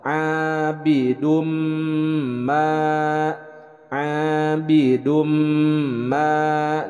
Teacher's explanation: Memasukkan tanwin bunyi huruf nun ke dalam huruf mim, lalu kemudian disertai dengan gunnah, disertai dengan dengung dan ditahan 2 harokat. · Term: idgham bi gunnah